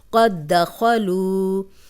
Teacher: خو موٹا حرف ہے، لو واو مدہ لمبا کریں گے